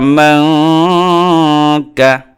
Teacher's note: মদের হরফ মিম নুন জবর মাং, কাফ জবর কা, মাং কা। নুন সাকিনের পরে কাফ আসছে ইখফা কর, অতএব এখানে ইখফা হবে